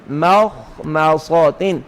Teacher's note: یہ 2 مستعلیہ کے درمیان میم آئی ہوئی ہے، اس کو خاص طور پر باریک کریں۔